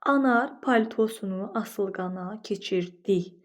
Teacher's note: Baxın biz burda di hecasını daha qüvvətli deyirik. Vurğu hecasının üzərindədir.